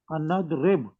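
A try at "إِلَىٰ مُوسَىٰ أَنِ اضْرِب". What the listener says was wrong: نون کے نیچے زیر ہے.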